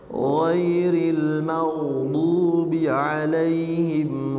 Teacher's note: dialirkan suaranya dan tebalkan suara gainnya